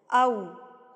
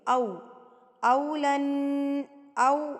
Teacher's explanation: ہونٹ آپ کے بالکل اینڈ پہ گول ہو جائیں گے